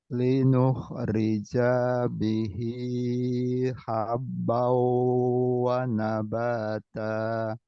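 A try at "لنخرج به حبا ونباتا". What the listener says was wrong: Nah, lagi. Janya pendek. Linuh rija bihi.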